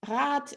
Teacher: Rad is ein langes A, the A is longer than in sat